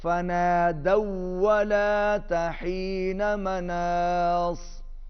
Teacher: फ़नादौ, दाल जो है वो वाव के साथ मिलेगा